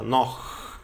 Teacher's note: Pensa na palavra nó com um arrastadinho, com um chiado arrastado no fundo da garganta. Noch, tá?